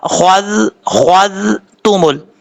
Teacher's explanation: ثم اتخذتمل، زال میں سیٹی نہیں آئے گی، خوا حروف مصالحہ میں سے ہے، پر پڑھا جائے گا. زال بغیر سیٹی کے ساتھ پڑھا جائے گا.